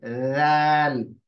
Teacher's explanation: बिल्कुल बारीक आवाज है, जाल, वाइब्रेशन के साथ है।